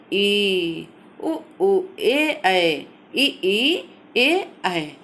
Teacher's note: जिन स्वरों के उच्चारण में जिह्वा का अग्र भाग ऊपर उठता है, अग्रस्वर कहलाते हैं।